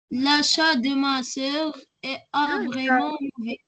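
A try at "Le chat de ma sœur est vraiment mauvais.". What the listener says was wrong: Le chat, s'il vous plaît. Le chat, c'est quoi l'achat? Le chat. Le chat.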